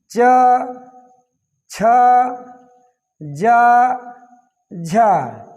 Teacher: ये स्पर्श संघर्षी होते हैं। इनके उच्चारण में हमारी जिह्वा तालु से स्पर्श करते हुए चलती है।